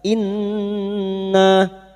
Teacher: nun yang bertasdid guna musyaddada kita dengungkan selama 3 harokat. Inna, nah fathah diikuti alif 2 harokat mad tabi'i.